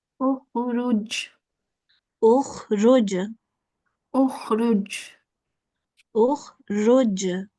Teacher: this is a jeem with a sukoon on top. So we will make this the Qalqalah sound at the end of this word